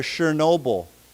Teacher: we pronounce this with a sh sound, not a ch sound